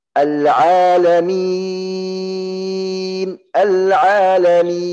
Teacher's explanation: harus keluar arid as-sukun dari mulut, bukan dari hidung. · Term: mad arid as-sukun